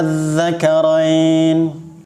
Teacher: Baca dulu 6 harokat, kemudian masuk ke dalam zal yang bertasydid. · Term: mad farqi